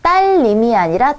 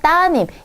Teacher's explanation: 좀 더 발음이 쉽게 리을이 탈락되는 경우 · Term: 리을 탈락